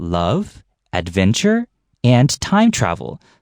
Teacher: So the first 2 things that are listed, the sound goes upwards, love, adventure, and the last one goes downwards, and time travel. · 你 的 前 面 的 2 个 A 跟 B 同 样 的 你 可 以 语 调 都 上 扬， 然 后 讲 到 C 要 出 现 的 时 候 语 调 下 降， 这 样 子 你 就 有 了 一 个 抑 扬 顿 挫。